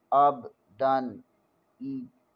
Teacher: دال دو زبر دن، دال دو زبر تنوین کے بعد حمزہ حروف حلقی میں سے ہے، یہاں غنہ نہیں، اظہار ہوگا